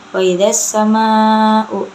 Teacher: Wa idza sama'u itu alif lam itu mad wajib mutasil karena mad tabi'i bertemu dengan huruf hamzah dalam satu kalimat. Cara bacanya panjang 6 harakat. · Cara bacanya alif lamnya tidak dibaca dan langsung dimasukkan ke dalam sin. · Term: alif lam syamsiyah